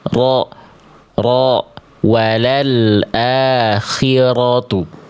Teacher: Getarannya ada tegas tapi enggak berlebihan. Enggak jadi samar, enggak jadi hilang, tapi enggak berlebihan juga. · Bukan ro, bukan ro, tapi ro. Getarannya itu sekitar 1 sampai 2 getaran aja, nggak berlebihan.